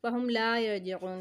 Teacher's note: फ़हुम ला में हम खींचेंगे इसको, लाम अलिफ़ ज़बर ला है, थोड़ा सा खींचेंगे